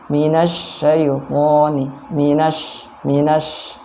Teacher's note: Huruf shin yang titik 3 itu ada udara yang menyebar di mulut ya. Jadi kalau maksudnya itu di tengah lidah dengan langit-langit yang atas.